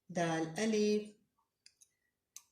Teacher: आपकी जो ज़ुबान की नोक है ऊपर सामने के जो दांत उसके जड़ के साथ लगाएं